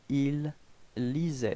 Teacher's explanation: even if we've got so many letters, we don't pronounce them after A-I